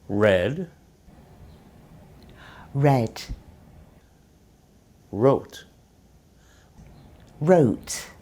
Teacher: In American English, the lips round a little when the R is at the start of a word. There's less rounding of the lips in British English.